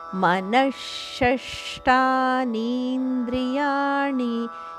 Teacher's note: ಮನದ ನಂತರ ಬರುವ ವಿಸರ್ಗದ ಉಚ್ಚಾರಣೆ ಷಟ್ಕೋನದ ಶದಂತೆ ಮುಂದೆ ಬರುವ ಶಬ್ದ ಷಟ್ಕೋನದಿಂದ ಶುರುವಾಗುವ ಕಾರಣ ಷಟ್ಕೋನ ಶದಿಂದ ಶುರುವಾಗುವ ಕಾರಣ ಮನಶಷ್ಟಾನಿ